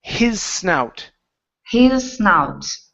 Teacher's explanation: give me an unvoiced S